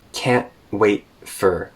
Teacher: So she's putting a glottal stop at the end of can't and wait, and she's reducing for.